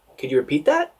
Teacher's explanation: and remember the rising intonation